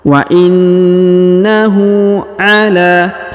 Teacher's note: huruf na ditahan dan ditekan karena terdapat tanda tasjid yau kemudian huruf hu dipanjangkan dua harakat karena di atasnya terdapat harakat W atau u